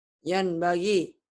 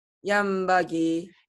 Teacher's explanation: Menjadi M. Terus bindeng. Terus Bindeng dan ditahan. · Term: Iklab